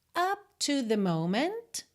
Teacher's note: não precisa marcar o P, tá? Consoante oclusiva, você pode só encerrar o som da vogal.